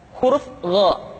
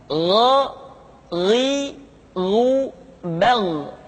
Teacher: Diucapkan seperti kita mengucapkan huruf Kha, yaitu diucapkan dari pangkal tenggorokan kita. Yang membedakannya adalah Kha mengalir nafas dan Gha tidak mengalir nafas.